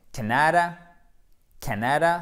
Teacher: Donc, je me mets devant, justement, le Canada, c'est Canada, Canada, c'est un A court, accent tonique sur la première syllabe